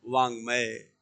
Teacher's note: आगे पंचम वर्ण होने के कारण हमने क के स्थान पे अंग किया।